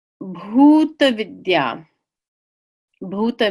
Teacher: this is a BH so it's an aspirated be